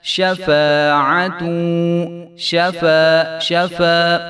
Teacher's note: منها، منها شفاعت، شفا، ایک الف کو آپ لمبا کریں گے، فا کے آگے جو الف ہے وہ پڑھا جائے گا، اور عین کے اوپر زبر ہے تو عین کو جو ہے ہم نے لمبا نہیں ہونے دینا